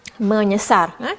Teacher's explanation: Sebab macam cikgu dah bagi tahu yang sebelum tadi, kalau S ini dia terima imbuhan awalan men, dia akan bertukar S menjadi NY, iaitu bunyi sengau yang artikulasi yang sama dengan S. Nya sama daerah artikulasi dia.